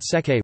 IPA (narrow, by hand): t͡sᵊt͡saj